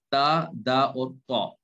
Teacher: زبان کی جو نوک ہوتی ہے وہ دانتوں کے جو سامنے والے جو دانت ہیں دونوں، ان کے مسوڑوں سے لگتی ہے، جا کر وہاں سے نکلتا ہے.